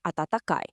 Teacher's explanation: She's just using the word's normal built-in pitch pattern with a simple, neutral falling tone at the end.